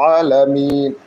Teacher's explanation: গলার মাঝখান থেকে উচ্চারণ করতে হবে দুই নম্বর মাখরা